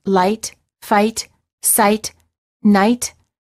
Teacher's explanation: the lips are open and not rounded and they close a bit when moving to the it position the tongue is relaxed and it moves from a flat to high position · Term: ey sound